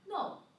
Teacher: So you have to make your pitch start from high, start the high pitch. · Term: fourth tone